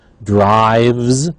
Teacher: Drives, however, is a v is voiced. We have a z at the end.